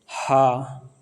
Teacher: ह का उच्चारण करने में स्वर तंत्र में कंपन होने के साथ ही महाप्राण वायु मुख द्वारा अधिक मात्रा में निकलती है। इसलिए ह सघोष महाप्राण ध्वनि है।